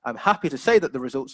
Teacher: a rising intonation to emphasize the positivity of the results